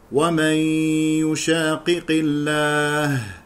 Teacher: يخطئ من يقرأ يشاقق بقاف واحدة مشددة، يقول يشاقي، والصواب القراءة بقافين